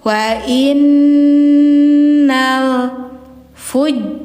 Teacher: tahan dulu ya nunnya didengungkan dulu karena gunah musyaddadah jadi nun bertasydid hukumnya gunah jadi bacanya didengungkan dulu wa innal Fujar lafi jahim.